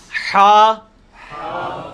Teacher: حلوائی والا جو ہا ہے، یہ وسط حلق سے یعنی حلق کے درمیان سے نکلتا ہے. یہ کبھی آپ وہ گلے والی ٹافی کھائیں نا، وہ والی آواز ایکزیکٹ بالکل کلیئر وہاں سے جو نکلتی ہے نا، یہ ہا کا مخرج وہی ہے.